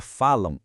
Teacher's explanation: São dois sons vocálicos, uma vogal e uma semivogal. Isso é um ditongo nasal.